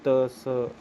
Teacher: जीभ दांत पे लगेगी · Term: दंत्य